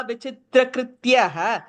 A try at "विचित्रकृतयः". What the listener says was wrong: Second line vichitra kritayah, full ta full ya.